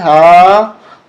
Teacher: یہ ہا سینے سے نکلتی ہے